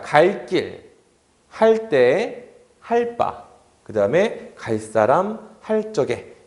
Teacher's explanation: 리을, 뒤에가 전부 다 어떻게 바뀌었어요? 된 소리로 바뀌었다라는 것을 알 수가 있죠